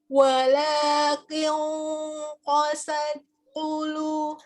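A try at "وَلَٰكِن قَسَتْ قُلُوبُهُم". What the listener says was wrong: Itu hamasnya belum ada jadinya. Qasat.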